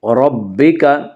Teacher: ربک کی را کو پر پڑھا جائے گا ، اس کا قاعدہ یہ ہے کہ را کے اوپر زبر